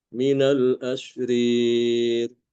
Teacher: Dan di surat Shad ya, ayat ke-62 وقالوا ما لنا لا نرى رجالا كنا نعدهم من الأشرير من الأشرير seperti itu, yaitu imalah alif pada dua huruf ro ya, di mana ro yang kedua berharokat kasroh atau dalam keadaan majrur ya.